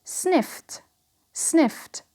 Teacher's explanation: So here the d becomes t because of the f.